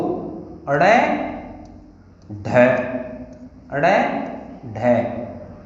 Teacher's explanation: जीभ के अग्रभाग को तालु से स्पर्श कराएंगे और फिर झटके के साथ उसे वापस पलटेंगे। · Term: उत्क्षिप्त व्यंजन